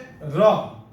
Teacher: પછી છે ર, જેનું ઉચ્ચારણ રેફ ધ્વનિ તરીકે પણ કહેવાય છે. જ્યારે બોલો ત્યારે જીભની બંને બાજુ તેનું કંપન થાય છે.